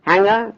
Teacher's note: no G after the velar nasal